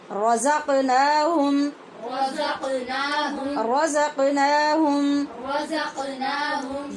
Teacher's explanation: قاف پہ قلقلہ ہوگا، اس سے پیچھے زا میں سیٹی کی آواز پیدا ہوگی، اور ہم کے میم پر اظہار شفوی ہوگا کیونکہ میم ساکن کے بعد یا ہے.